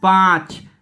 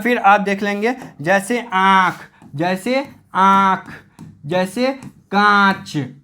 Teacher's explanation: आपको मुख और नासिका दोनों से आवाज मिलेगा। इसी को हम बोलेंगे अनुनासिक।